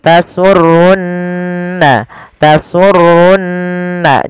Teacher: ada nun berharokat tasydid, maka ia kita baca dengan bacaan gunnah, ditahan suara nunnya. Tasurunna, tasurunna, jangan langsung tasurun nadhirin, tapi tahan dulu.